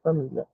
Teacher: está saindo da semivogal i para a vogal a família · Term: ditongo crescente, Ditongo crescente